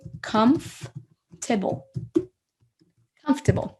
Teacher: Vous entendez, en fait, j'ai sauté le OR. Je n'ai pas dit comfortable.